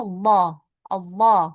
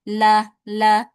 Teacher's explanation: Tapi kalau yang tebal dibaca lho Allah l. Tapi kalau yang tipis ya atau tarqiq itu dibacanya seperti huruf lam biasa.